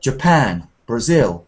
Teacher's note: we've got words like Japan and Brazil, where the stress comes at the end, not the beginning.